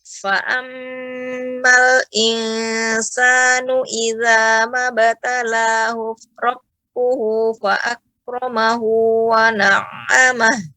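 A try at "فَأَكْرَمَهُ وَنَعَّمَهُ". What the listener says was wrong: Kafnya kurang ditampakkan hamzah Ibu. Fa'akramahu wa na'amah. Fa'ak, ya, lebih ditampakkan lagi. Fa'ak, ya. Ak, ya. Ak, seperti itu.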